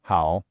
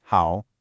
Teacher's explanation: A native speaker says how a rising tone then a dipping tone. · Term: tone sandi